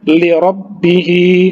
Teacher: Li rabbihi, hi 2 harokat karena mad silah, ya. Karena dia berjumpa dengan huruf selain hamzah, jadi panjangnya cukup 2 harokat.